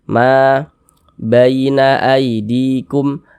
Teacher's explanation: ma dibaca panjang. Mad thobi'i panjangnya dua harakat.